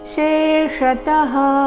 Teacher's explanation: ಮೊದಲು ತಾಲವ್ಯ ಶ ನಂತರ ಮೂರ್ಧನ್ಯ ಶ.